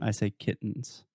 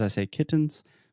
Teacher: just in a normal conversational way I will say kittens so the only difference between a stop T and true tea is with a stop T I am NOT aspirating